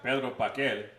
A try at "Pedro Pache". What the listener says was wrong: No, it's Pache or Pache. There's a CHE there. It's Pache. Pache. Pedro Pache.